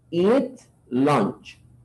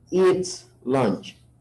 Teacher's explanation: Pero como estamos hablando de una she, ya no decimos eso, decimos eat lunch. Ese sonido de la S hay que tratar de sacarlo. A veces no se escucha, a veces casi no se percibe, pero claro, alguien que habla inglés tiene que ser capaz de percibirlo.